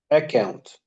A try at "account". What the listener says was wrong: Too much students say account. Don't stress the k sound because you have to say account, not account. no stress on K, on the double C, which is K. Be careful of the vowel and consonant letters.